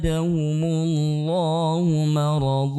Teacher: Mar itu hanya dibaca dengan dua harakat saja ya Kenapa karena dia adalah mad iwad atau termasuk mad asli ya